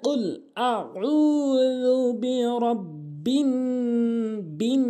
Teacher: নাস কিন্তু এখানে 3 আলিফ টেনে পড়তে হবে।